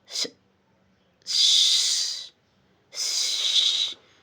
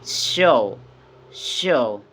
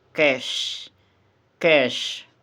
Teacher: Okay, the explanation is the sh is voiceless, post-alveolar, and fricative.